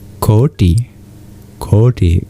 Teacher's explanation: The T with a dot under it is retroflex, meaning you curl your tongue backwards to pronounce it. So in Koti, you actually turn your tongue upside down, and you use the bottom of your tongue to touch the hard palate. Then there's the nasalization, as I said, the anuswar at the end of both these bijas. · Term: retroflex T